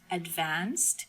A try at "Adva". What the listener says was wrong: So don't say the st. So say advanced without the ending, and that's my name right there.